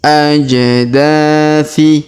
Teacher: Huruf da kita panjangkan 2 harokat karena terdapat alif di depannya.